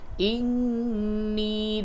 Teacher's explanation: نون مشدد ہے، غنہ کریں گے، اور یا مدہ ہے، اس کو تھوڑا سا کھینچ کے پڑھیں گے۔